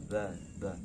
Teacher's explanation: merapatkan kedua bibir. Bibir atas dan bawah bertemu tapi lembut